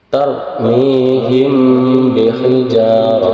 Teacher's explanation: cara bacanya disamarkan dua harakat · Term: Ikhfa Syafawi